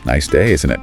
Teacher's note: Falling intonation usually means you're just checking or expecting agreement.